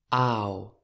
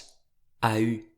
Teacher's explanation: on entend à la fois le A et le U, mais qu’ils ne sont pas complètement séparés. Je dis bien [aw], qui ne fait qu’une seule syllabe et non pas [a.y], qui en ferait deux. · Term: diphtongue